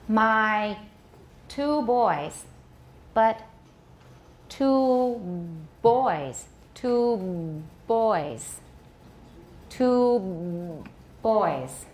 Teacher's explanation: before I release the stop I am voicing it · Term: voice stop